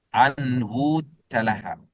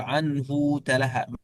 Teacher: فإنه يصل الهاء بواو مع التشديد